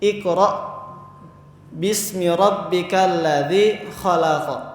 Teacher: Ketika hamzah ini dalam keadaan sukun, maka dibacanya itu mentok, seperti terhalang sesuatu gitu. Tidak bisa dipanjangkan, tidak bisa dipantulkan.